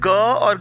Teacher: तो ये आवाज़ें जो है वो कंठ से निकलती हैं, गले से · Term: कंठ वर्ण